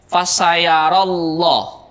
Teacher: sudah kita bahas disebut dengan lafdzul jalalah Abdul jalalah di sini dibaca tafkhim atau dibaca tebal atau dibaca dengan suara O